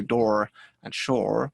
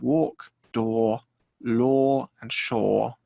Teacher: walk door lore and shore one thing i will point out americans sometimes give it more of an or at the end if it has a letter r